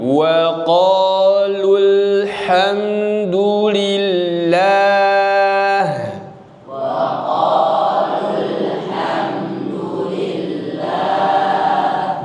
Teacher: Maka ketika ada mad asli yang dua harakat bertemu dengan hamzah wasal, mad aslinya gugur. · Hamzah wasal aktif di awal. Hanya berlaku ketika di awal, ketika memulai. Tapi ketika di tengah dia gugur.